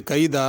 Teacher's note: کیدا پہ اگر رکیں گے تو اسی طرح پڑھیں گے کیدا، اور غنہ بھی نہیں ہوگا۔ اگر ملا کے پڑھیں گے تو پھر غنہ ہوگا، پھر ایسے پڑھیں گے کیدا واکید کیدا۔